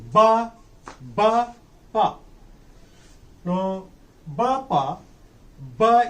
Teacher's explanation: in the articulation of bar our vocal cords are held together they come closer to each other and when they come closer to each other blotters wait contracted